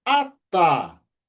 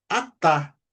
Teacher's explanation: Então nós temos a vogal, a letra alef, que não tem som, acompanha da vogal a nós temos a letra Tav com som de T, também acompanhado pela vogal a e o re, que não tem som no final da palavra. A, sílaba tônica é a última sílaba